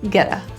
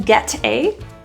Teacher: that's pronounced as a flat T, a little quick D. Getta, rather than get a, getta.